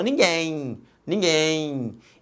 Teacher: no final este M representa um ih aqui representado foneticamente pela letra Y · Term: ditongo fonético